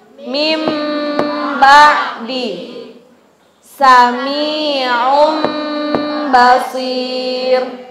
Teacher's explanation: Apabila ada nun mati bertemu dengan ba, cara bacanya hurufnya menjadi berubah mim disertai dengan gunnah selama 2 ketukan. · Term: Iqlab